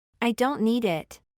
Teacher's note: lo regular será pronunciada como una flap t y Recuerden que el sonido de la flap t se asemeja al de nuestra r en español